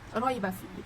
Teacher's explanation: Roi itu tu hukum dia madlin sebab huruf ya sukun didahului oleh huruf ra berharakat fathah. Jadi dibaca dengan 2 harakat.